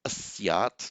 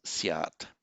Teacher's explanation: it has this odd characteristic that in certain forms of the verb the initial a drops out